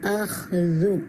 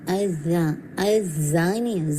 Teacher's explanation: ذال کو آپ نے بالکل تھوڑا سا نرمی کے ساتھ پڑھنا ہے, ٹھیک ہے. اب اس میں زا کا ساؤنڈ نہیں آنے چاہیے, ٹھیک ہے. اخذو ذال ازا ازانی, یہ والا ساؤنڈ نہیں آنا چاہیے, ٹھیک ہے.